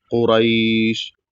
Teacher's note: را کے بعد یا ہے تو یہاں پر اس کو معروف پڑھنا ہے